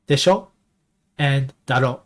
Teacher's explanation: You just drop the oo off of the end. So, it's just one syllable.